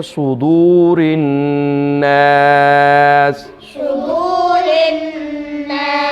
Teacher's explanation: صاد کو موٹا کر کے پر کر کے پڑھیں گے اور نون پہ پھر ہم غنہ کریں گے